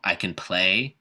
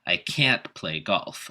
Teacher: pronounce it with a schwa in the middle and stress the next word